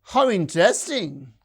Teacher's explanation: And the rise fall, it is used in very restricted context when something is highly enthusiastic or even sarcastic. It's really wonderful, enthusiastic agreement.